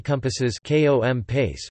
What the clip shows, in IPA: komˈpase